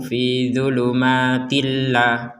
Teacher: enggak ada dengung sama sekali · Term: enggak pakai dengung